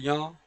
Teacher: य का उच्चारण स्थान है तालू और नासिका